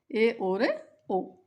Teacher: अर्ध संवृत स्वर में उसकी ऊंचाई संवृत स्वर से थोड़ी कम होती है, आधी होती है, अर्ध यानी आधी।